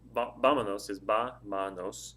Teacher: It's 3 syllables. The stress of the word is on the first syllable